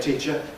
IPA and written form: ˈtiːʧə (teacher)